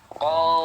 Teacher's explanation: Kemudian infitah, rongga mulut terbuka. Ketika mengucapkan ko, jangan mencucu. Kalau mencucu menjadi o. Nah, harus sempurna terbuka, ya. Dan ismat berat diucapkan.